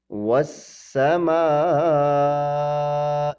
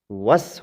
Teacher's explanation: وس میں واو سیدھا سین کے ساتھ ملا، درمیان سے الف اور لام گر گئے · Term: شد